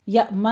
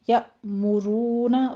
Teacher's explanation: میم کے اوپر ضمہ ہے، ہونٹ گول کر لیجیے